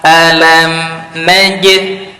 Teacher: Najid tahan dulu baru keluarkan qalqalah, karena huruf jim memiliki sifat syiddah.